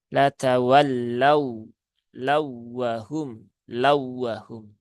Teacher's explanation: tunaikan tasdidnya, tidak perlu ditahan terlalu lama karena tidak ada kaidah gunnah di situ dan tidak ada juga kaidah menahan terlalu lama di lafadz ini. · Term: idgham mutamasilain